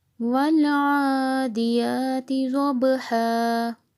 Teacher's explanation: اس میں آئین کو حلق سے ادا کرنا ہے، الف کے ساتھ میچ نہیں کرنا